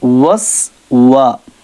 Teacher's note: اور یہاں پر سیٹی کی آواز ہے، واو کے اندر ہونٹ گول ہوں گے، وس، وا، واو پر ہونٹ گول، سین میں سیٹی کی آواز